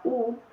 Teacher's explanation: Y para finalizar tenemos el redondamiento que podemos usar como ejemplo la U, que notamos como hay un redondamiento en los labios